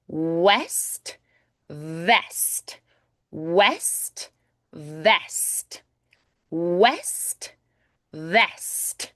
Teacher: A nice crisp T, that final consonant.